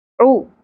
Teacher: عو عین کے اوپر پیش ہے عیون نہیں پڑھنا عوین